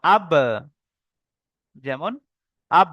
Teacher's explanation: দুই ঠোঁটের, দুই ঠোঁটের ভিজে অংশ হতে বা উচ্চারিত হয়